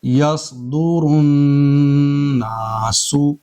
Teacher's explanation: نون کے اوپر یہاں تشدید ہے تو نون کے اندر غنہ کریں گے 1 الف کے برابر